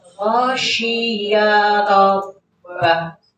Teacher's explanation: Ya-nya pendek, langsung ke roh.